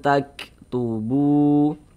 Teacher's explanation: Bunyi nun sukunnya kita baca samar. Jangan kita baca an berbunyi n sempurna, jangan, tapi disamarkan. Kemudian didengungkan atau digunahkan. Jadi suaranya itu kita tahan, kita panjangkan sejenak. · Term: ikhfa hakiki